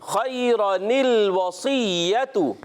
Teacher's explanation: تنوین کے بعد حمزہ وصلی آتا ہے تو وہ حمزہ وصلی گر جاتا ہے